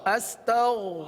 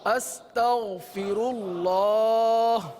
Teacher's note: غین ہے حلق کے اوپر والے حصے سے ادا ہوتا ہے، غین کو پر ادا کرتے ہیں